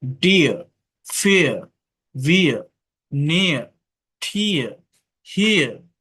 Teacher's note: আর যদি শব্দের শেষে থাকে আর এর উচ্চারণটা হয় না, এটা ব্রিটিশ ইংলিশে হয়ে থাকে আর কি, ডিয়ার, ফিয়ার, ভিয়ার, নিয়ার, ঠিয়ার, হিয়ার।